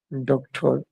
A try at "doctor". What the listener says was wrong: আর উচ্চারণ হবে ডক্টর, ডক্টর, ওকে, ডক্টর, ডক্টর না, ডক্টর। এই যে আর এর উচ্চারণ হয় না এটা